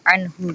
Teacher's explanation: Jadi ada mati ketemu dengan huruf H, itu dibacanya jelas, jadi nggak dengung dan juga nggak samar gitu, jadi dibacanya tetap anhu gitu. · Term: idhar